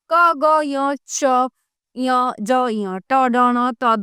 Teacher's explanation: जिन वर्णों के उच्चारण में वायु की मात्रा कम होती है वे अल्प प्राण कहलाते हैं।